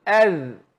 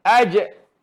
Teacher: Kalau zal alif fathah, zal sukun az, keluar angin. Alif fathah jim sukun aj, tak keluar angin, dia qalqalah.